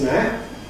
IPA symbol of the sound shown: æt